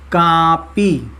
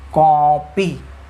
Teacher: उसका प्रोनाउंसिएशन, उसका उच्चारण परिवर्तित हो जाता है, आ से कन्वर्ट होके ओ में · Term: आगत स्वर